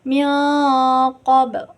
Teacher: Ihfa itu samar, tapi di ihfa ini tuh harus pas kita menyebutkan mil itu tuh harus menyerupai huruf yang ada di depannya.